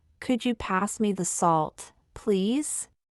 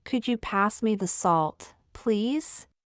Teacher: Notice, could you rise slightly? Salt is stressed. The key word. Please falls gently at the end. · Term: Intonation and stress